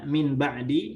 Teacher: renggangkan ya kita membaca Min ba'di menjadi rapatkan dua bibirnya ya dirapatkan dua bibirnya kemudian mengalirkan sifat huruf nun ke hidung kita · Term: ikhfa